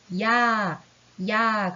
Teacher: 야라고 하면은 처음에 이처럼 발음할 것 같다가 아로 끝나죠. 야, 그래서 입 모양이 한 번 바뀌어서 두 번에 걸쳐서 모양이 나타나요. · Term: 이중모음